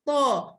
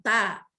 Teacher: To di atas bunyinya to, bukan ta. Kalau ta jadi nipis lah. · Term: tebal